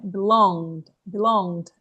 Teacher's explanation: Esse D aqui, ele é bem suave no final.